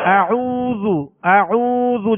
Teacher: اعوذ اس میں ہونٹوں کو گول کریں گے، ہونٹوں کو کامل گول کریں گے ورنہ مجہول پڑھا جائے گا